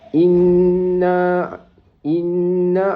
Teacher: Inna di situ ialah wajibul ghunnah. Dibaca dengung dua harakat.